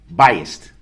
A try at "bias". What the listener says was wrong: No, bias. B-I-A-S. There's no T at the end. Bias.